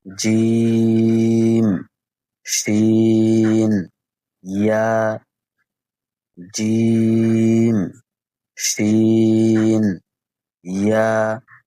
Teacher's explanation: ৬ number মাখরাজ জিহ্বার মধ্যখান তার বরাবর উপরের তালুর সঙ্গে লাগায়া